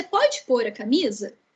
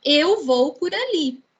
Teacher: Percebam como que a nossa pronúncia natural já indica, né? O por verbo, ele tem uma pronúncia de mais intensidade na frase do que a preposição.